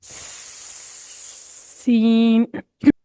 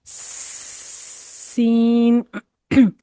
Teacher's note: ऊपर के दो दांत और नीचे के दो दांत इनके किनारों से जब हमारी जुबान की नोक लगती है और दांतों के दरमियान से हल्की सी हवा निकले तो सीटी की सी आवाज बनेगी